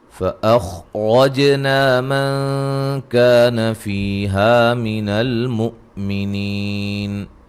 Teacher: خا کو موٹا ادا کریں گے، اور را کو موٹا، جیم پہ قلقلہ، نا الف مدہ ہے، من نون ساکن کا باریک اخفا ہے، کا الف مدہ ہے، فی یا مدہ ہے، ہا الف مدہ ہے، حمزہ کو جھٹکے سے ادا کریں گے، نی یا مدہ ہے، وقفاً بڑی مد کے ساتھ پڑھ سکتے ہیں۔